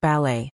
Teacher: with the stress on the second syllable, and that T is silent